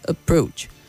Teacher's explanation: very important individual and not individual approach and not approach okay the stress is only on the second syllable not on the first